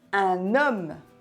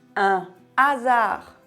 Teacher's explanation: quand j'ai dit un homme j'ai fait la liaison mais quand j'ai dit un hasard j'ai pas fait de liaison